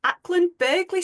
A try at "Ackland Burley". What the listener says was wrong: The G is silent, Ackland Burley.